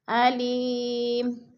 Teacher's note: وقف کی صورت میں 2 پیش نہیں پڑھے جائیں گے بلکہ جزم میں بدل کر پڑھیں گے